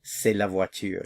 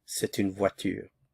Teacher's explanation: You wouldn't hear the T sound. But since the indefinite article here begins with the vowel, there's liaison, so you hear the T